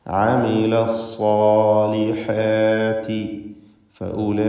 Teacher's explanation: നിർബന്ധമായും 4-5 ഹറക്കത്തിൻ്റെ അളവിൽ അലിഫിനെ ദീർഘിപ്പിക്കുക. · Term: മദ് മുത്തസിൽ വാജിബ്